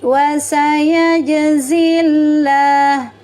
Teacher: Hukumnya adalah alif lam syamsiyah atau idgham syamsiyah. Lamnya dibaca tarkik tipis karena didahului oleh harakat kasrah.